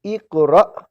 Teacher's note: اقرا نہیں پڑھیں گے نرمی سے بلکہ جھٹکا دیں گے